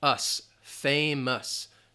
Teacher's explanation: the OUS is more just like an us. You have that schwa sound.